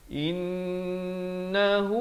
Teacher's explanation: Dan ada jim kecil di sini, boleh waqaf, ibtidak pada innahu, wajibul gunnah, wajib dengung di sini 2 harakat